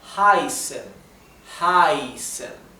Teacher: la vocal que precede, el sonido vocal que precede a la SZ se debe pronunciar más largo